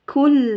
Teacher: Idgham bila gunnah, yang tidak didengungkan, langsung masuk ke lam